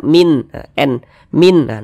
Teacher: Dibaca jelas, tidak berdengung. Apanya yang dibaca jelas? Huruf nunnya kita baca jelas. Bunyi nonnya kita baca jelas, bunyi dia n sempurna, min, n, min, baca sempurna, jangan disamar-samarkan, jangan, jelas. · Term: izhar halqi